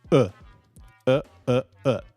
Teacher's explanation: the vowel sound in the function word becomes the neutral sound